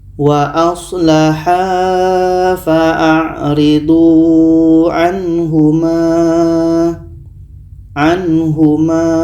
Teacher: Mat jaiz munfasil ketika berhenti hanya 2 harokat saja. Jangan kita baca melebihi sampai 4 sehingga 5 harokat.